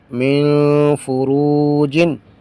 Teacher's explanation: میم نون زیر من، فا پیش فو من فو، را واو پیش رو من فرو، جیم دو زیر جن من فروجن، یہاں پر بھی اخفا بھی ہے اور حروف مدہ میں سے واو ہے تو اس کو لمبا بھی کریں گے، فرو اس کو لمبا کریں گے اور من پر اخفا کریں گے